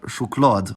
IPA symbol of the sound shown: ɧ